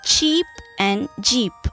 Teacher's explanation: the tip or the blade of the tongue is the active articulator and the teeth ridge is the passive articulator · For example, in the case of cheap and jeep, okay, here the blade of the tongue touches the teeth ridge and produces the initial sound ch and j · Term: palato alveolar, palato-alveolar